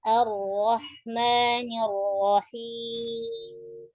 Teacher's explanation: Di ar-ra suara tetap ngalir.